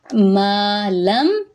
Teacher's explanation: ما پہ الف مدہ ہے، ایک الف کے برابر لمبا کریں گے